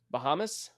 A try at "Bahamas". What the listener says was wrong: Bahamas. Bahamas. I don't think I've ever heard it with such an S, man. You sound like a snake would say Bahamas.